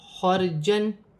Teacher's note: را ساکن سے پہلے زبر ہے، را موٹی پڑھی جائے گی